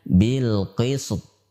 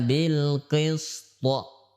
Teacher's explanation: ketika dia dalam keadaan waqaf bil qisti, maka harus dipantulkan dengan sempurna